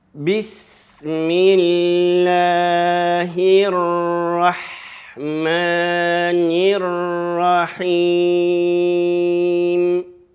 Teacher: В конце закрываем губы, завершаем голос, после завершения и переходим на следующую.